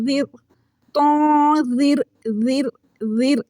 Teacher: را ساکن سے پہلے والے حرف کے نیچے زیر آ گئی ہے، جس کی وجہ سے اب را کو ہم باریک پڑھ رہے ہیں۔ یہاں پر یہ موٹی نہیں پڑھی جا رہی، چونکہ قاعدہ یہ ہے کہ را ساکن سے پہلے زیر آ جائے تو اس کو باریک کر کے پڑھیں گے۔